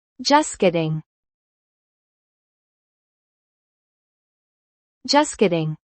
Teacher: The final T is barely heard.